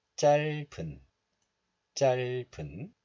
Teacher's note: This letter is pronounced as 짤 in isolation, but it is followed by a vowel of the next letter. So the hidden 비읍 sound moves to the next letter, and 은 becomes 분.